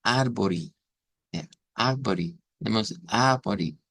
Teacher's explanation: una E al final en las palabras en el portugués se convierte en sonido I